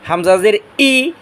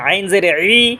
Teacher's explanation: হামজা জের ই গলার শুরু থেকে আর আইন হচ্ছে গলার মাঝখান থেকে আইন জের ই হামজা জের ই আর ইয়া হচ্ছে জিহ্বার মাঝখান